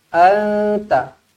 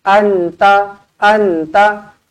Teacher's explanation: Bunyi nun tu dia tak bunyikan dengan jelas. Kalau jelas bunyinya an. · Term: ikhfa